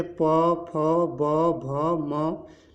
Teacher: जब भी आप प, फ, ब, भ, म बोलते हैं तो आपके दोनों होठ आपस में टकराते हैं, इसलिए इन वर्णों का उच्चारण स्थान ओठ मान लिया गया, ओष्ठ मान लिया गया है।